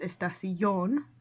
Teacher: The stress is on the last syllable, not the next to the last one, so that's why it's estación, not estación.